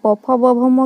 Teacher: दोनों ओंठों के टकराने से इस ध्वनि का उच्चारण संभव होता है, इसलिए इन्हें ओष्ठ्य कहा जाता है